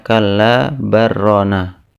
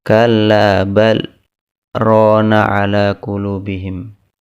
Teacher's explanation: Hukum saktah yaitu diam sejenak tanpa mengambil nafas, tapi setelah itu dilanjutkan dengan membaca ayat. Diam sejenak tanpa mengambil nafas, kemudian dilanjutkan dengan membaca lanjutan dari ayat.